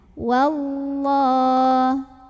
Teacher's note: Wallah. Ada lam jalalah yang dibunyikan secara tafkhim. Kenapa? Karena huruf sebelumnya yang waw ini barisnya di atas. Jadi bacanya tebal, pangkal lidah naikkan. Wallah. Kemudian setelahnya ada alif lam, namanya alif lam syamsiyah.